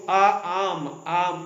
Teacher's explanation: सो विवृत open जैसे आ जो आ आम तो पूरा मुंह खोलकर आ इस तरह से हम उसका उच्चारण करते हैं। वो विवृत मतलब ओपन पूरा मुंह खोल के आ का उच्चारण किया जाता है।